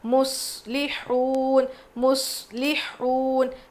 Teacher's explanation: صاد پہ جزم ہے، دبا کے پڑھنا ہے، اور یہاں پہ قلقلہ بالکل نہیں کریں گے، صاد کی آواز کلیئر ہونی چاہیے